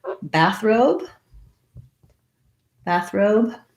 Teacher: So it has a clear vowel and secondary stress on the second syllable.